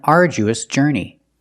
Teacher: the DU makes the J sound like jump and Juice